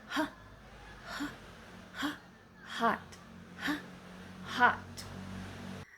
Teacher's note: And the last one is glut sound made at the glutus or vocal cords. Air passes through the vocal cords without much obstruction.